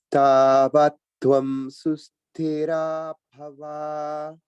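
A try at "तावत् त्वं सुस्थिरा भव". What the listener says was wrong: Good. And notice the mahaprana in thi, in susthira.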